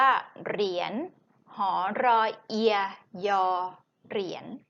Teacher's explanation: ญหญิงในที่นี้จะออกเสียงเป็นเสียงนอนสะกดค่ะ